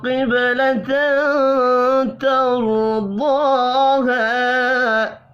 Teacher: تنوین کے بعد تا ہے، اخفاء حقیقی ہوگا ، را اور ضاد کو پر پڑھیں گے، ضاد کھڑی زبر · نون مشدد پر غنہ کریں گے ، قاف حروف مستعلیہ ہے، پر پڑھا جائے گا، با ساکن